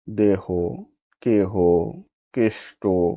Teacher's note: হ কিংবা আকার বিহীন যুক্ত ধ্বনি পরে থাকলে এ সংবৃত হয় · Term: সংবৃত এ